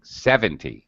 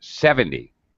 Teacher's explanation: you want to emphasize the beginning 70 and very much de-emphasized very very relaxed reduced